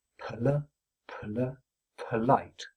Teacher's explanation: finishing the /p/ before starting the /l/, one can add in the rest of the word with of course a stress pulse on the second syllable.